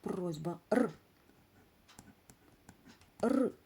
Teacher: р приголосний він особливо звучний або сонорний